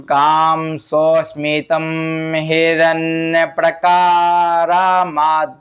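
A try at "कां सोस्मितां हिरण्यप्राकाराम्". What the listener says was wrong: यहां पर सोस्मिताम आ की मात्रा है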